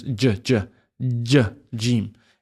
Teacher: It comes from the middle of the tongue, just coming up, jeem. Next one is ha.